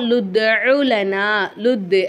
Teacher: லுத்து அப்படிங்கும்போது தால் என்ன செய்யணும், நம்ம அசிச்சு ஓதணும். இங்கே நம்ம வந்து கல்கலாவுடைய சட்டத்தை ஃபாலோ பண்ணணும்.